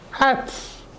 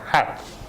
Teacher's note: The T is soft, so it ends with a more of an S sound